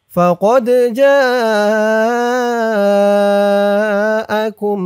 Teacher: জা চার আলিফ টান মধ্যে মুত্তাসিল